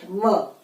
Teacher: तो व का उच्चारण स्थान है दंतोष्ठ।